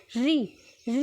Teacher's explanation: री जब आप बोलोगे तो आपकी जो जीभ है वो आपके दांतों के पीछे की साइड में थोड़ा सा टच होएगी, तो तब जाके वो उसको कहते हैं मूर्धन्य।